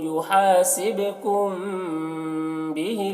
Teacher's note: میم ساکن کے بعد با ہے تو یہاں پر غنہ اور اخفا کے ساتھ پڑھیں گے، اس کو اخفاء شفوی کہتے ہیں۔